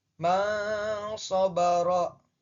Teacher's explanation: ketika dibaca menggunakan hukum ikhfa nun matinya dibaca samar